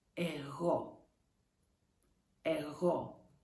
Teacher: Be careful, the accent is on O.